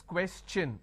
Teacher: When I have the word question, the tion becomes ch-n. So it becomes question.